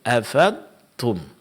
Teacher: mengganti huruf dad menjadi huruf dal